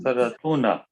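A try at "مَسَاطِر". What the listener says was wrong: No, masatiru. Because here the meme is coming with a kasra, not with a dhamma.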